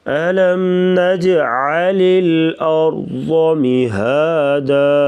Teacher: را ساکن اس سے پہلے زبر، را کو پر پڑھیں گے موٹا اور ضاد کو بھی موٹا پڑھیں گے. ألم نجعل الأرض مهادا والجبال أوتادا.